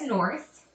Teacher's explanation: it has the th and it has the unvoiced th